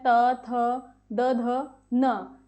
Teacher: यहाँ पर वायु दांतों और जीभ के संपर्क से बाहर निकलती है, जिससे इन ध्वनियों की विशेष पहचान बनती है। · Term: दंत्य वर्णों